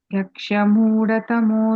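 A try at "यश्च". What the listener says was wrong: I'm hearing a iksh sound. Ishad. Yascha. Yeah, ish and the cha.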